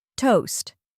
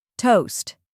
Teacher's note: The T is pronounced clearly, followed by the long O sound like in go or boat, and the ST sounds like sti in stop or fast. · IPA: /toʊst/